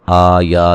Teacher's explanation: आ या दोनों पे मद असली है, एक अलिफ की मिक़दार के बराबर लंबा करेंगे दोनों को